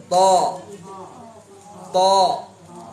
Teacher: dia punya sifat isti'la itbaq. Lengket langit. Bibir nggak usah bantuin, ini kerjaan lidah.